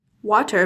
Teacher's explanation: with T's, some Brits use a glottal stop.